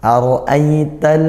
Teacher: Kemudian di sana ada ra berharokat fathah. Hukumnya ra tafkhim, dibaca tebal ra-nya dengan menaikkan pangkal lidah